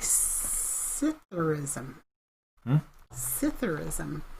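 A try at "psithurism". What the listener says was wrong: No, I think the S is silent.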